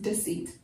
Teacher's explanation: the e is not stressed and so it doesn't have a long e sound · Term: the schwa